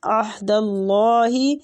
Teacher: اللہ کی لام کو بھی پر پڑھیں گے زبر کی وجہ سے